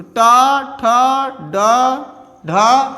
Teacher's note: इनका उच्चारण स्थान क्या होगा? मूर्धा होगा। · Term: मूर्धन्य